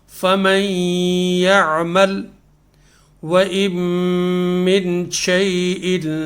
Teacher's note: جب ہم ایک سے لے کے دو تک گنتی اتنی دیر تک اس کو ہم نے غنہ کر کے پڑھنا ہے